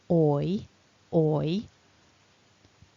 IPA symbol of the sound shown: ɔɪ